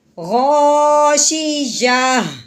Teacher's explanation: جب ہم وقف کریں گے تو تا نہیں بلکہ ہا پڑھیں گے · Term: گول تا